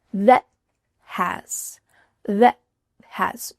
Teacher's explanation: This is called a stopped T. So instead of making that T sound with a puff of air, your tongue's going to stop at the top of your mouth.